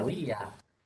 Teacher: En la A y la U hay diptongo, la I y la A se separan